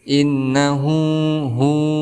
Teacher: Kemudian ada hu mad silah qaswirah. Panjangnya 2 harokat. Karena ada hal dhamir, sebelumnya ada huruf hidup dan bertemu dengan huruf ijaiyah selain daripada hamzah.